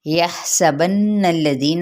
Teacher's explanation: بالالف کا قاعدہ، یحسبن الذین، ہا پہ ہمس، نون پہ غنہ، غنہ کرتے ہوئے لام کے ساتھ ملائیں گے اور لام کی حرکت کو لمبا نہیں کریں گے ، ذی پہ مد اصلی بالیا کا قاعدہ،